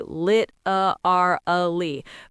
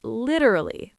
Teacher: The stress is at the beginning.